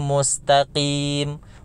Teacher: Mustaqim itu huruf qaf, itu dikurangi ketebalannya.